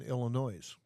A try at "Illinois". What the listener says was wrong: Illinois. There's no S that you actually pronounce in Illinois. But that's incorrect.